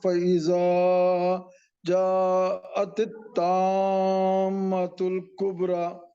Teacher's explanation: ذا کو بھی کھینچیے ایک الف کے برابر